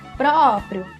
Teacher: então pró é a sílaba tônica